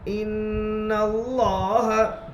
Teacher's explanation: تشدید کی آواز میں قسم کی سختی ہوتی ہے. نون مشدد میں ایک الف کے برابر گننا ہوگا. نون کے اوپر زبر ہے، زبر کو جلدی پڑھے تھوڑا بھی نہ کھینچے.